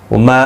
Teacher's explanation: وما الف مدہ ہے، ایک الف کی مقدار کے برابر کھینچیں گے